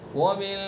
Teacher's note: ومن اس میں بھی غنہ کریں گے، اخفا کریں گے